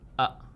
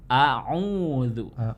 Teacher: Kalau hamzah itu dari aqsal halqi, sementara ain itu dari wastul halqi.